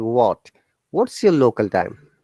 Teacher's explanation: remember the word what h is there but we don't pronounce it